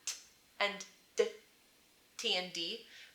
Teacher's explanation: made with the tip of your tongue and your alveolar ridge